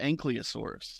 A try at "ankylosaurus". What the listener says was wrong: That's a common mispronunciation. Yeah, a lot of people call them ankylosaurs, but you're switching the Y and the L.